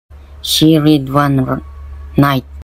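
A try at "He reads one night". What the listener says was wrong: The reader substituted the word he by the word she. He also omitted the S sound from the word reads.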